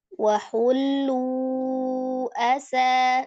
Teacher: lu ini adalah mad tabi'i waw, bertemu dengan huruf hamzah di beda kata ya. Jadi mad jaiz munfasil, panjangnya 4 atau 5 harakat.